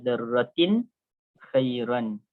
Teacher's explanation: Jadi ini dia izhar tanwin bertemu dengan kha, itu izhar, kita sebut dengan jelas.